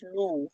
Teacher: ওয়াও সাকিনের ডান দিকে পেশ আছে, ওয়াও মাত্রা হবে, ওয়াও মাত্রাকে একালি পরিমাণ টান দিয়ে পড়তে হয়।